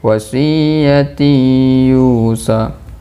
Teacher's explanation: pada ketika membaca tanwin bertemu dengannya itu harus berdengung karena idgham. Idgham ma'a gunnah.